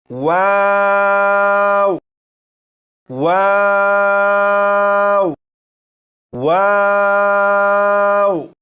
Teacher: अब यहाँ पर देखिएगा, यह है वाव, और यहाँ पर वाव का मखरज लिखा है, दोनों होंठों को गोल करने से अदा होता है। जब वाव को पढ़ेंगे तो दोनों होंठ गोल होंगे।